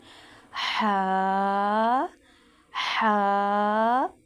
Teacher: وسط حلق، یعنی حلق کا درمیانی حصہ، وہاں سے ہا اور عین ادا ہوتے ہیں۔